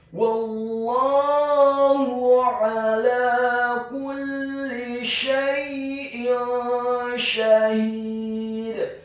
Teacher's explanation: Kemudian kata kulli, huruf kafnya dibaca tipis dhammah 1 harokat, huruf lamnya ditasydidkan, ditekankan, dibaca tipis kasroh, cukup 1 harokat saja.